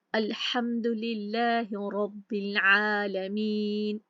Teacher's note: बा की जेर लाम साकिन के साथ हमने मिलाकर पढ़ी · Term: हमज़तुल वसल ड्रॉप